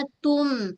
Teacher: Kat sini berlaku hukum ikhfa dengung nipis. Okey sebab ta huruf yang nipis pada tum a mim satu kali ghunah bunyi am.